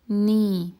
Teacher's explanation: pronounced by placing the tip of the tongue on the upper gum. And the sound also passes through the nose just like the n sound in English. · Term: Non